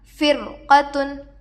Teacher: رائے ساکنہ کے بعد حروف مستعلیہ میں سے قاف آ کر ہے، اس لیے یہاں پر ہم رائے ساکنہ کو پر پڑھیں گے